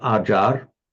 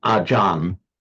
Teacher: another peculiarity of Thai phonetics is that a final L or R will be pronounced as a N. So that's how we get Acharya becomes Ajahn in the Thai pronunciation.